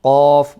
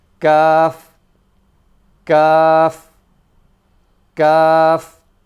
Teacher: So the qaf is right from the back of the mouth, and the kaf is just slightly forward from where the qaf comes from.